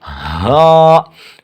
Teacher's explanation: اقصائی حلق یعنی حلق کا آخری سینہ کی طرف والا حصہ، ٹھیک ہے، اقصائی حلق۔